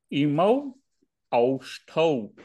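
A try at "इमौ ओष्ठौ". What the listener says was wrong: Oshthau. It's just O. There is only one here.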